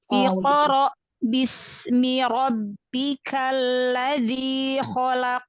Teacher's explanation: Jadi salah satu kesalahan ketika kita membunyikan huruf qalqalah sukun itu suaranya terputus dengan huruf setelahnya. Jadi jangan terputus.